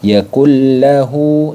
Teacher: dibaca idgham Bila gunah dileburkan saja tanpa harus didengungkan